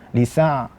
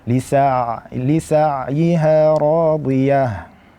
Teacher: ain makhrajnya adalah di wasatul halqi ataupun di tengah tenggorokan. Maka hati-hati ketika mengucapkan huruf ain, jangan sampai kita mengeluarkan huruf tersebut ke dalam khayshum ataupun ke dalam hidung.